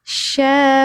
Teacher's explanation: Ini sya tengah lidah menyentuh langit-langit